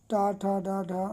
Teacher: हम ठ जान गए कि ठ का उच्चारण स्थान मुर्धा है